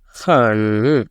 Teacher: you have to go down from the top and go up again. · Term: third tone